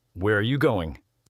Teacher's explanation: with information questions starting with what, where, when, who, why, or how, your voice often goes down at the end